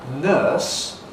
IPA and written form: nɜːs (nurse)